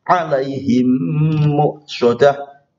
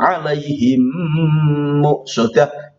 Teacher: mem bertemu dengan mem, maka agak berhenti sejenak tapi berdengung. Alaihim muqsadah, bibirnya nempel. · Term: idgham mimi